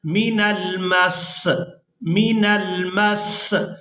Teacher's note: یہاں ہم نے جب وقف کرنا ہے تو وقف کی صورت میں ہم نے نیچے جو زیر ہے سین کے، اس کو ہم ادا نہیں کریں گے، سین کو ادا کریں گے ہم یہاں پر من المس، من المس، میم کو سین کے ساتھ سختی کے ساتھ ملائیں گے کیونکہ یہاں پر شد ہے، تو جو شد والا حرف ہوتا ہے وہ سختی کے ساتھ ادا کیا جاتا ہے۔